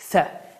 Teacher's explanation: Və bu hərfin məxrəci, yəni çıxış yeri dilimizin ucunu yuxarı kəsici dişlərin ucuna vuraraq və ya dilimizin ucunu aşağı və yuxarı kəsici dişlərin arasından bir az çıxardaraq dilimizdə olan S səsinin incə və pərtəy formasıdır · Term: Th hərfi